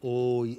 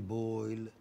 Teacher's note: Back, between half closed and half open, and rounded to central and half closed.